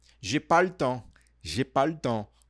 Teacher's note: Aqui você vai engolir um pouco esse le